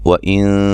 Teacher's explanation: نون ساکن کا اخفا ہے باریک